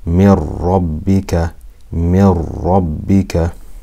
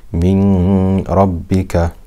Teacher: It drags whatever haraka is before it. We completely merge the noon into the ra without ghunna. So it's not min rabbika, it's mir rabbika. · So we've covered that yanmu letters, we do the merging with ghunna, whereas ra and lam is merging without ghunna. So we just completely join it without ghunna.